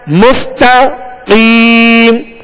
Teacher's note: مستقیم قاف حروف مستعلیہ میں سے پر پڑھیں گے مگر تا کو باریک پڑھیں گے، تا کو پر نہیں کریں گے.